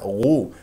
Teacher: اجريتها فيها هواء اصبحت خاء او اشمم تها خاء وهذا غلط الغين يجري فيها الصوت ولا يجري فيها النفس